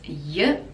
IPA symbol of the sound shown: jə